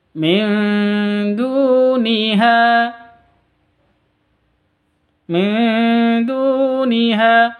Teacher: nun mati bertemu dengan Zal dengan Zal cara bacanya samar didengungkan